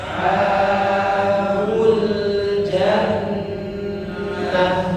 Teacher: ta marbutah kalau waqaf berhenti maka dibaca menjadi huruf ha